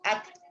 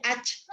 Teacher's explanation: Jadi ada udara yang keluar. Ada udara yang keluar ketika membaca huruf ta sukun